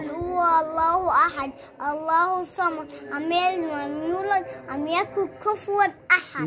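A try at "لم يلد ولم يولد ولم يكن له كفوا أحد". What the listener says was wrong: Lahu, das vergisst du immer.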